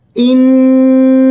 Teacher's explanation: এই গুন্নাটি এক আলিফ পরিমাণ টেনে করতে হয় অর্থাৎ গুন্না এর সময়টা এক আলিফ পরিমাণ থাকবে